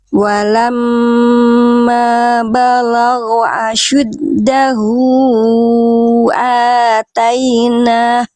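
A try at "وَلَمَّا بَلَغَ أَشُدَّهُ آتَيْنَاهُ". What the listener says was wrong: Eh, kurang panjang ya. Iya, kurang panjang.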